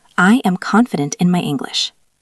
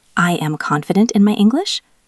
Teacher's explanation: Listen to the intonation. It goes down at the end. That makes it sound sure. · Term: downward intonation